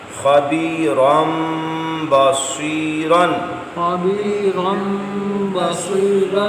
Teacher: خبیرا بصیرا، خبیرا بصیرا، خبیرن تھا یعنی راد ہوتا اور رن نون کی آواز تھی نا، اس کو آپ نے میم میں بدل کے اقلاب کیا